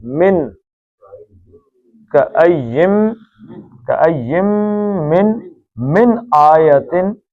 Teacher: اب یہ من ہے، نون ساکن کے بعد حمزہ آ گیا ہے، تو نون ساکن کے بعد حمزہ ہلکی ہے تو نون کا اظہار ہوگا